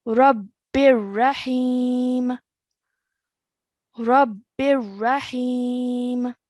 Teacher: But in recitation, that tanween is now turned into only a single stroke of kasra. Okay, and the ra mushaddad stays as it is, meaning that nasal sound is removed from our recitation